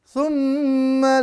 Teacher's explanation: mim bertasdid ya dibaca dengung